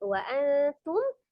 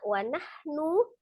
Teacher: ada nun sukun bertemu dengan ta ikhfa, dihukum ikhfa samar ya. Dibaca samar, syukur saja, kecil saja ikhfanya.